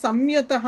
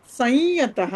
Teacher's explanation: య వస్తే అనునాసిక యకారం